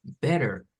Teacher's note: Es una R más suave todavía que la R de suave del español.